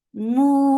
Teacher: you are giving temporary sukun on noon. This temporary sukun has turned this two counts long vowel into four. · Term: madarat al-sukun